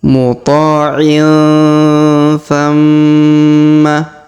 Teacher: huruf tanwin in pada huruf ain bertemu dengan tha di sini berwarna hijau, sama-sama berwarna hijau. Maka cara bacanya didengungkan dan disamarkan ya.